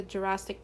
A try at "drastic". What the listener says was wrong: Although it sounds like you're saying Jurassic and not drastic. No, it's drastic.